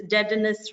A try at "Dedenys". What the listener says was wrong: Yeah, without the S in French, we don't really pronounce the S.